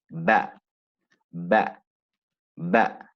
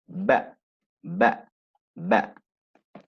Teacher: Then we've got meme, then we've got the ba, ba, ba. It's articulated by pressing the lips together firmly and quickly. Ba, ba, ba.